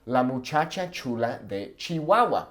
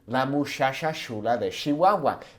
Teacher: oftentimes they turn the CH into an SH sound